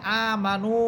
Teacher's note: এরপর লেখা আছে আমানু, এখানে আছে নুন ওয়াও পেশ নু, পেশের পর ওয়াও সাকিন, পেশের পর ওয়াও সাকিন, তাহলে আমরা জানলাম যে পেশের পর ওয়াও সাকিন থাকলেও এক আলিফ পরিমাণ টেনে পড়তে হবে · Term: এক আলিফ টেনে